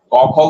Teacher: তুমি দেখবে তোমার জীবের পিছন ভাগটা উঠে গেছে ও গিয়ে কিছুটা জায়গা ব্লক করেছে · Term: কণ্ঠবর্ণ